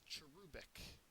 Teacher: the second syllable is accented